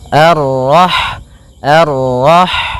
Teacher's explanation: Rah di sini ada huruf ha ha yang berharakat Sukun dan sifat ha itu yang paling mencolok adalah sifat hamasnya yaitu mengalir · sifat ha itu yang paling mencolok adalah sifat hamsnya, yaitu mengalirnya nafas ketika kita membacanya, ar-rah, ar-rah.